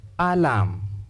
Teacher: The first sound is the short vowel sound a. The sure sound or the lazy sound.